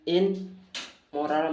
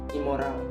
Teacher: prefix in juga berubah menjadi im untuk menyesuaikan dengan bunyi M pada kata moral.